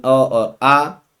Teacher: कंठ से बोले जाने वाले जो होते हैं साथियों, वो होते हैं अ और आ